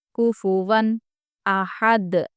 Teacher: कुफुवन अहद, देखिए यहाँ पर भी हम वक्फ कर रहे हैं, इसलिए जज़म देकर सांस छोड़ने की वजह से ये दाल कलकला हो जाएगा, कलकला का हर्फ हो जाएगा, इसलिए यहाँ पर भी हम कलकला करेंगे।